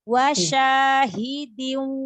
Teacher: Dialirkan lagi ke hidung, ditahan gunahnya lebih lama lagi.